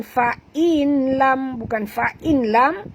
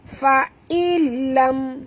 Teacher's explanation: Bacaannya bukan fa'in lam, bukan fa'in lam. Nun ni tak berbunyi tuan-tuan puan ya. Terus saja masuk hamzah ni ke dalam lam. Fa'il lam. Nah, gitu bunyi dia. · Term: idgham bila guna